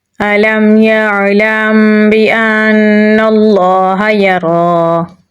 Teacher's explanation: را کو پر یعنی موٹا پڑھیں گے، کھڑی زبر ہے تو اسے ہم لمبا پڑھیں گے